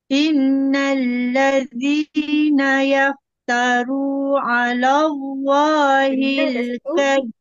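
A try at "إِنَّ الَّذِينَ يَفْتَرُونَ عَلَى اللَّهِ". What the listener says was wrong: Ada tertinggal na tu.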